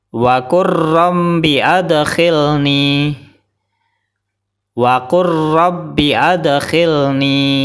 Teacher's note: Salah, karena lam sukun belum dimasukkan ke ra. · Kemudian contoh berikutnya, lam sukun bertemu dengan ra. Jadi cara bacanya, lam sukun langsung dimasukkan ke ra.